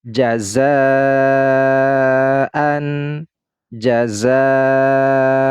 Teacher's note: huruf Zai ini adalah Mad Thobi'i berjumpa dengan Hamzah dalam satu kalimat nah ini mad wajib muttasil dibaca panjang 4 sampai 5 harakat · mad wajib muttasil dibaca panjang 4 sampai 5 harokat